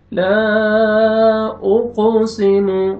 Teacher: قاف حروف قلقلہ میں سے ہے، ڈبل ساؤنڈ آئے گا